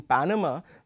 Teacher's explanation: in Panama we are going to be slightly louder on the first syllable as opposed to the second and the third syllable